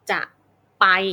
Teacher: เราก็จะไม่เน้นน้ำหนักสิ่งที่จะแต่ว่าเราเน้นไป